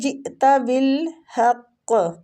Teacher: ہم قاف پہ رک رہے ہیں، ساکن کر رہے ہیں، اس وجہ سے قاف کو ہم قلقلہ دیں گے · جئت بالحق حمزہ پہ جھٹکا دیں گے